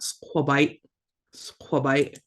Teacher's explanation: It sounds like there should be a T at the end, but there's not